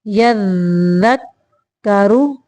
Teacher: را کو موٹا پڑھیں گے کیونکہ را کے اوپر پیش ہے۔ یذک کر، دونوں صورتوں میں را کو موٹا پڑھیں گے۔